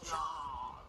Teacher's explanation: The jaw drops and the tongue presses down in the back. >> When this vowel is in a stressed syllable, the voice will go up and come down in pitch.